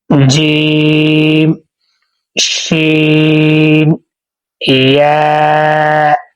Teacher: زبان کو درمیان اور تالو کے ملنے سے ادا ہوتے ہیں۔